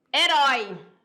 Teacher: o ditongo aberto ficou na última